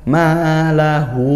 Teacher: panjangnya satu Alif atau dua harakat karena fathah diikuti Alif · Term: Mad Thobi'i